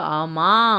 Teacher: ஆமா அப்படின்னு சொல்லுவோம்ல ஒரு மாதிரி அழுத்தி சொல்லுவோம் சரிங்களா அந்த மா வந்து நீண்டு ஒலிப்போம் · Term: அளபெடை